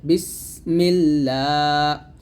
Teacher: আর এই আল্লাহ শব্দ লামের ডানে যখন জের আসছে তখন এই লামটা পাতলা করতে হবে